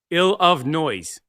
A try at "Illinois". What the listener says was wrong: No, not of.